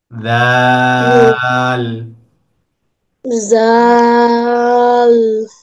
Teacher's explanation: জিহ্বার আগাটা উপরের দুই দাঁতের আগাতে লাগবে, তিন আলিফ টান দিয়ে।